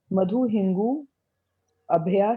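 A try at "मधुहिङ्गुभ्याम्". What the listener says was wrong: हाँ ये अभ्या नहीं है, मधु हिंगुभ्याम द्विवचन है ना। हाँ द्विवचन है।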